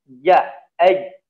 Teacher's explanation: kalau ja, tengah lidahnya yang sentral itu menempel ke atas. Ja, mematikan suara, mematikan nafas ya.